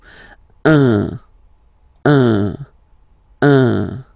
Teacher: So if you listen to me, you don't hear any N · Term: nasal